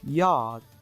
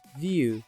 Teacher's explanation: From the phonetic point of view the articulation of /j/ is practically the same as that of the vowel sound [i], but is very short. · y is voiced palatal, gliding, or approximant. W is voiced bilabial, gliding, or approximant. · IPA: /jɑːd/